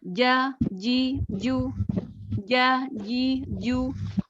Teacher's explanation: Tengah lidah menempel ke langit-langit ini tepat ya jangan ada hembusan nafas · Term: huruf Jim, huruf jim